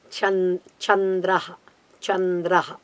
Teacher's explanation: it's a palatal so you have to move the palate a little bit back